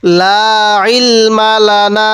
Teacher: আইনটা একটু চাপ দিয়ে পড়বো, অনেকেই আমরা এই আইনগুলোকে হামজা পড়ে ফেলি।